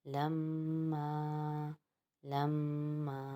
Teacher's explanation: لام میم زبر لم، میم الف زبر ما، لما، لما۔ یہاں پر میم کے اوپر بھی ہم ایک الف کی مقدار غنہ کریں گے اور میم الف ما، کیونکہ الف مدہ بن رہا ہے اس لیے یہاں پر بھی ایک الف کی مقدار کھینچیں گے۔